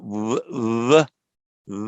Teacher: It's like a v, v, v, almost like a w, but with the lips a bit closer together